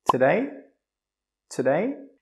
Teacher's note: this is a one-word question with a yes or no answer, so the intonation must go up.